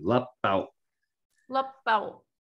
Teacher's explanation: it ends in the glottal stop, so you like cut it off at the W.